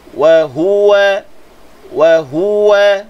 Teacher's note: Ha ni, beratkan sedikit suara pada ha.